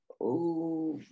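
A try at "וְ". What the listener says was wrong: Ve. It's ve, not u.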